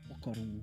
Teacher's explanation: in Taranaki, Whanganui, they tend to drop the H sound